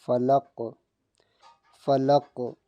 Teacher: قاف حروف قلقلہ ہے، اس کی ڈبل آواز آئے گی، یعنی لگ کے واپسی آواز آئے گی